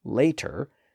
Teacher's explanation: that t sound in the middle has a vowel sound on each side and vowel sounds are always voiced